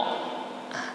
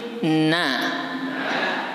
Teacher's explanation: saya ulang urutannya nempel ke gusi, lam dulu, kemudian nun, kemudian ro